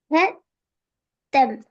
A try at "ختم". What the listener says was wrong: ஹ என்று வரக்கூடாது. நான் இப்பதானே சொன்னேன் ஹ என்று வரக்கூடாது. எப்படி வரணும் அது?